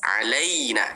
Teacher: Makhraj huruf ya di tengah lidah, angkat ke langit atas.